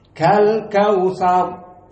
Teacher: Dan al-kautsar ra di sini dalam keadaan mufakhamah. Karena dia asalnya fathah, kemudian disukunkan, dan sebelumnya fathah. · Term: tafkhim